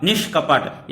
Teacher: यहां पर देखिए ये क्या है, मूर्धन्य श बीच में आ रहा है, ये है ना मूर्धन्य श।